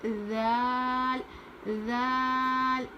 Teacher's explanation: ذال کو بھی اسی طرح سے پڑھتے ہیں جس طرح سے ہم نے سا پڑھا ہے یعنی زبان کی نوک کو اوپر کے دانت پر لگا کر پڑھیں گے. ہلکا پڑھیں گے.